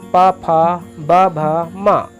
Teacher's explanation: ठीक उसी प्रकार प वर्ग में प, फ, ब, भ, म ओष्ठ है। इनका उच्चारण दोनों ओठों से होता है।